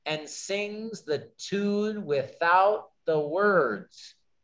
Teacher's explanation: Eight syllables using unstressed, stressed pattern. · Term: iambic rhythm